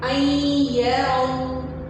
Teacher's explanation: جیسے یہاں پہ آپ مثال دیکھ رہے ہیں، این یرو، یہاں پر ہم ان یرو نہیں اس کو پڑھیں گے، یعنی ہم نون کی آواز کو یا کے اندر مکس کر رہے ہیں، مدغم کر رہے ہیں